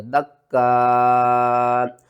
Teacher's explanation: وقف کی صورت میں حمزہ کو جب ساکن کریں گے تو جھٹکے کے ساتھ پڑھیں گے